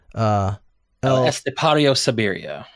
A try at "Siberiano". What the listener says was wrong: Siberiano. There's an N in there.